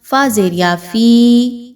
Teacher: 2 حرکات کے برابر یا مدہ کو لمبا کر کے پڑھا جائے گا